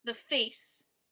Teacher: the is unstressed and face is stressed